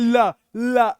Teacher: हवा आपकी दोनों साइड में होकर निकल जाएगी, साइड में होकर निकल जाएगी। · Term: पार्श्विक